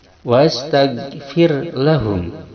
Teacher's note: Fir ro disukunkan, sebelumnya ada kasroh dibaca tarkik, yaitu cara membacanya tidak ditebalkan, ditipiskan.